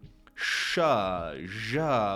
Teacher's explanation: post-alveolar, right behind that alveolar ridge, that bump right behind your teeth